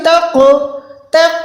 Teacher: یہاں پر آپ نے قوف پہ کلکلا یعنی آواز کو لوٹانا ہے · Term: قلقلہ